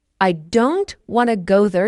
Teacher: Now the smaller words like I to and there are said more softly or quickly. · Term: rhythm